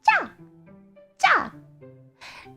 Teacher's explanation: So you noticed chi and small ya fused together become cha cha.